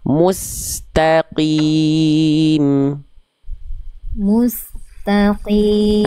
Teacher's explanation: Qof di sini dia tetap tebal walaupun ketebalannya menipis. Qof kasroh itu qof berharakat kasrah dia dibaca ketebalannya menipis.